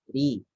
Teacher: yang berharokat kasroh dibaca tipis, tarkik, ri.